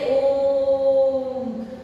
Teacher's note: अब ये एस हमें ये दर्शाता है कि हमें जो ओ का उच्चारण करना है, इस ओ को उच्चारण को हमें बहुत लंबा स्वर खींचना है, जैसे ओम। तो हमें ये ऐसे ही गाइडेंस मिल जाता है कि हमें इससे ओ के उच्चारण को लंबा खींचना है। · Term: प्लुत स्वर